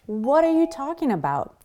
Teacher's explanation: Notice that when we have the T from what between two vowel sounds, the A in what and the A in R, what are, we actually turn that into a D sound